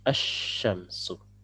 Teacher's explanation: Ya, ini berpadu maksudnya adalah rebut-rebutan tempat keluar ya, karena keluarnya dua-duanya dari lidah ya, lam dari lidah, shinnya dari lidah, makanya ini akan bertabrakan tempat keluar. Nah, satunya ngalah kemudian memberikan tempat kepada huruf yang kedua yaitu huruf shin untuk mentasdidkan. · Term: huruf syamsiyah